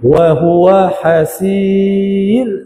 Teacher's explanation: wahua hasir ra tu nipis ya